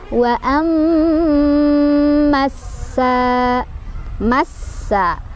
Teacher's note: Wa amma, di sana ada gunnah musyaddadah karena ada mim yang bertasydid. Cara bacanya berdengung, ditahan dengungannya sampai kerasa ke hidung.